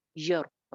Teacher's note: را موٹی ہو جائے گی کیونکہ پیچھے زبر ہے. جب سائلنٹ را ہوتی ہے تو ہمیں پیچھے والے لیٹر کو دیکھنا ہوتا ہے نا، تو پیچھے زبر ہے.